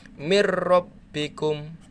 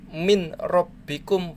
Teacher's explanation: Masuk, ya, masuk tanpa berdengung. Begitu juga ini mir rabbikum, masuk di ro-nya, mir rabbikum, bukan min rabbikum, bukan, tapi mir rabbikum. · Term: idgham bila guna